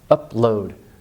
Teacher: Stop sound not released there. Upload. So you don't blend them.